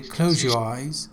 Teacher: when ze is followed by ye, ze changes to je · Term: assimilation